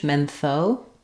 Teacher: This would be men, voiceless th, mentho.